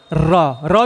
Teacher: इसके उच्चारण में क्या है? जीभ तालु से लुढ़कती है। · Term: लुंठित वर्ण